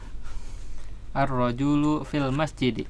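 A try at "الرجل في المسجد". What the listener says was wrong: Ar-rajulu ya, ju-nya jangan panjang ya, pendek. Iya, ar-rajulu fil masjidi.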